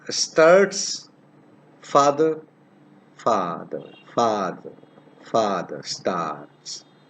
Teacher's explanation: So this is a long vowel. You know it already. It is produced in the back part of the vocal tract. So it's basically the sound originates in the back part.